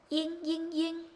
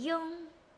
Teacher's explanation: This is Ying, Ying, Ying, very forward. This is Yung, Yung, more backwards.